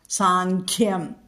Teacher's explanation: അനുസ്വാരത്തിന് ശേഷം ഖ എന്നുള്ള അക്ഷരം വന്നതുകൊണ്ട് അവിടെങ്ങ് കവർഗ്ഗം വന്നതുകൊണ്ട് അവിടെ അനുസ്വാര ഉച്ചരിക്കുന്നതിനു പകരം ങ്ങ ഉച്ചരിക്കുക